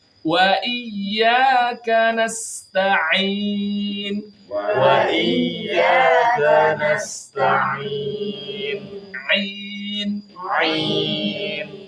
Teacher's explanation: jangan sampai ada keluar dari hidung ngih Ain itu enggak keluar dari hidung huruf yang keluar dari hidung cuman dua Nun sama mim saja